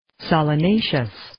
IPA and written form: ,sɑːlə'neɪʃəs (Solanaceous)